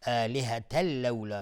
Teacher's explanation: تنوین بعدش لام ادغام بدون غنه میشه